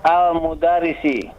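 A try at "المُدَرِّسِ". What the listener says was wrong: Al-mudarrisi, ra-nya ditasdid. Al-mudarrisi.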